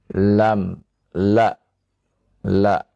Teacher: ia keluar dari ujung lidah Oh ya dari tepi lidah tepi lidah bagian depan Hai jadi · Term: huruf lam